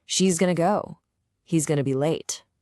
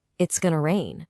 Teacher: This reveals a really subtle but super powerful pronunciation secret. When you say he's or she's, the S on the end actually sounds more like a buzzing Z sound.